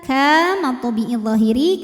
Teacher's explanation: karena ada Alif didahului baris fathah maka Kaf panjang dua harakat